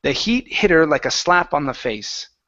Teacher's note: so remove the H on her